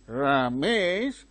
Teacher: When you use that tone, fall and rise, a sense of doubt is expressed.